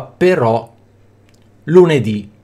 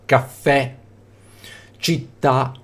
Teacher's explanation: tronche Allora l'accento cade sull'ultima sillaba